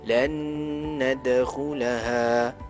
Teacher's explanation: Jika huruf nun pula, nun sukun bertemu dengan nun, lan nadkhulaha, dengar, kena dengung 2 harakat